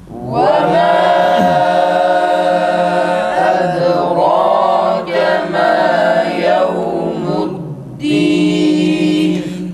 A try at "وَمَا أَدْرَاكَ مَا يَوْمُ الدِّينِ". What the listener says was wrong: Ötre o çıkmasın arkadaşlar, tekrar.